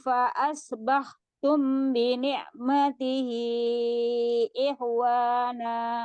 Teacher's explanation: Ada mim sukun ketemu dengan ba-nya ya. Ikhfa safawi ya, ada gunnahnya.